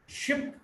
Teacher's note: Front, near half close, unrounded vowel.